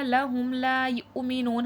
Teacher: حمزہ پہ جزم میں جھٹکا آئے گا، نون میں واو ساکن سے پہلے پیش ہے، واو مدہ کھینچ کے پڑھا جائے گا.